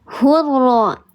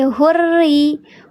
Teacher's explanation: Nah, di sini ada lam ta'rif menghadapi huruf ra. Tapi huruf ra di sini kasrah, berarti dia dibacanya bukan hurra, tapi hurri. Dia terhampar pangkal lidahnya. Betul, bukan lam qamariyah, namanya lam syamsi karena ada tasydid.